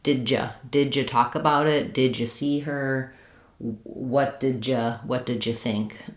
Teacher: This D and ya, people will change it to a J. They merge those two together. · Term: J sound